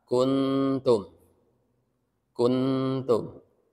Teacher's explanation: agak mendengung cuma enggak bunyi Eng tapi sudah siap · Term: ikhfa